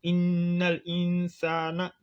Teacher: Ici, on applique la règle du tajwid qu'on appelle ghunna, la nasalisation.